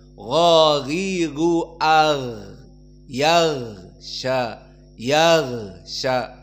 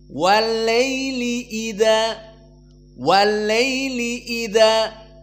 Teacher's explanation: dan mufakhamah maka mufakhamah maknanya Di saat dia menyebutkan huruf ini mulut ini penuh dengan udara dan lisan kita cenderung kepada alhanaq Al Ala ataupun langit-langit mulut yang atas